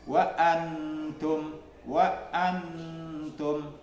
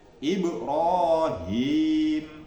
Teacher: Hamzah dan ha ini keluar dari tenggorokan bawah